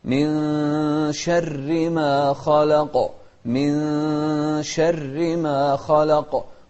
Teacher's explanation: النون الساكنة هني بعدها الشين، وهذا الحكم يسمى إخفاء